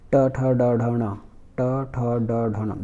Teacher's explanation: ट ठ ड ढ ण बोलने पर आपका जीभ हल्का से कर्व ले रहा है और नाक के नीचे का जो मुख के अंदर नाक के नीचे का जो हिस्सा है, मांस है, वहाँ जाकर टकरा रहा है बीच में, मुख के बीचों बीच। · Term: मूर्धा